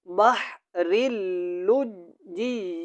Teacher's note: یہاں پہ نا کافی شدات ہیں، پہلے را کو لام کے ساتھ ملانا ہے، اس کے اوپر شد ہے، پھر لام کو جیم کے ساتھ ملانا ہے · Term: ادغام